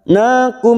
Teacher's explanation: mim sukun bertemu ain idhar safawi kita baca jelas tanpa mendengung